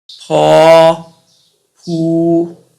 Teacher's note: 雙唇塞音，發音時用雙唇閉塞阻住氣流，再用力以較強嘅氣流衝破雙唇而成音